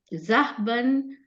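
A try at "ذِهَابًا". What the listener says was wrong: Not Zahaban, it says Zihaban. See, there is no set pattern for anything over here for the masdar,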